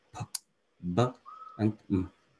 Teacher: the lower and upper lips approach or touch each other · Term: bilabial